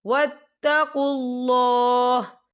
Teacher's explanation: یا دیکھیں آپ کو چھوٹی سی توہین لکھی نظر آ رہی ہے، تو یہ وقف مطلق کی علامت ہے، تو یہاں پر ٹھہرنا بہتر ہے۔ وقف کی صورت میں ہا ساکن ہو جائے گا